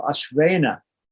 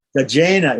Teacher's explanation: It's simply ENA. The N is a dental N and it stays like that. It doesn't change to a cerebral N.